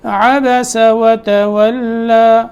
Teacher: وتولى دونوں واو میں ہونٹ گول رکھنے ہیں، لام باریک ہے. عبس وتولى یہاں ہم نے جب وقف کیا ہے تو صرف اس کو ایک الف کی مقدار کے مطابق لمبا کیا ہے بس، یعنی 2 حرکتوں کے برابر.